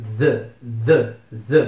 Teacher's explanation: ter que pronunciar aquele fonema meio estranho do inglês em que a gente coloca a língua entre os dentes e pronuncia o intermediário entre d t e s